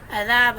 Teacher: ہوں گے، قاف موٹا ہوگا، عذاب میں ذال نرمی سے ہوگا، عین حلق کے درمیان والے حصے سے ادا ہوگا